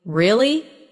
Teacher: when you ask a question like really, your voice goes up slightly at the end. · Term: Intonation